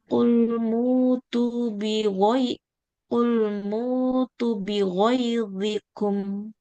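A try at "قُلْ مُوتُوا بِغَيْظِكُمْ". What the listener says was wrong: Tuh, taknya panjang kan Ibu? Kulmutu, iya.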